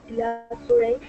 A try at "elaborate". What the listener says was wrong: We pronounce it elaborate. The stress goes to the beginning of the word when it's an adjective or a noun.